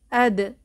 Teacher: বিপরীত ছাড়া সিফাত গুলোর মধ্যে দেখতে পাচ্ছি দাল হচ্ছে কলকলাহ কারণ দাল উচ্চারণের সময় প্রতিধ্বনি বা পাল্টা আওয়াজের সৃষ্টি হয়